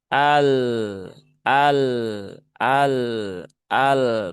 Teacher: lam sukun itu sifatnya tawasut, bukan syiddah. Jadi bukan ditekan seperti ini, tetapi dialirkan sedikit.